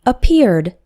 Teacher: two verbs to form the past of appear we say appeared both appear and appeared have two syllables each we don't add an extra syllable for the Ed